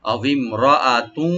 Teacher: রাটাকে open করে deep করে পড়বো, আর হামজাটাকে রাইট দিব। তু এখানে তানবিন আছে, তানবিন ওয়ার্ডস এখানে ইদগাম উইথ গুন্না হবে।